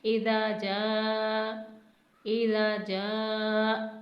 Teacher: جیم الف جا جس پر مد مفصل موجود ہے، اسے 5 حرکت کے برابر ہم کھینچ کے پڑھیں گے